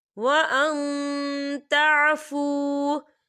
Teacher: نون ساکن کی آواز کو ناک میں چھپائیں گے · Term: اکفا